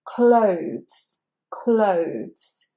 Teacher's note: Now the O sound is the diphthong, which is the same as in phone and bone and roam.